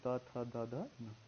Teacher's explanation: इसलिए इनको दंत व्यंजन। ता जब बोलते हैं तो जीभ जाके दांत से हमारे टकराती है।